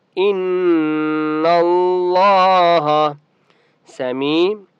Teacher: ان اللہ سمیع یا مدہ ہے. میم کو ایک الف کی مقدار کھینچ کر پڑھیں گے